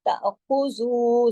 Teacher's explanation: زو کو 2 حرکات کھینچا جائے گا واو مدہ کی وجہ سے